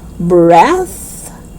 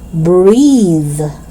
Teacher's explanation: the first one is voiceless. So you pronounce it as breath. And the second one is voiced. So you say breathe.